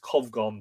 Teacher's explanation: probably pronounced Covgon because of the M with the lenition